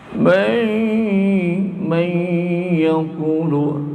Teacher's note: nun mati ketemu ya, idgham bi gunnah.